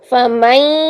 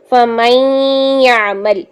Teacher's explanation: نون کی آواز کو لاتے ہوئے غنہ کرتے ہوئے 2 سیکنڈ کا غنہ کریں گے